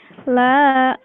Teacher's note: ini lamnya panjang karena ada alif di depannya, jadi la.